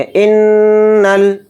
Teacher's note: नून में गुन्ना करेंगे और नून को लाम में मिलाकर पढ़ेंगे